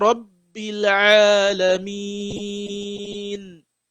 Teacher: the Ain here has al-mad. So this A, you have to pronounce it for 2 seconds